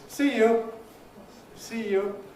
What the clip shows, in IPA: ˈsiː ju